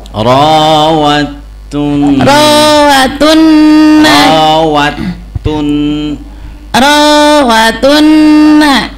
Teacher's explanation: Apa [Musik] coba saya baca ibu lihatin ya. Jadi di situ ketemu dal sama taatnya bertasdid, hurufnya lebur.